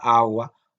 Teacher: La G es un poco más, no explota, sino que es esta G que nosotros llamamos fricativa, como en la palabra agua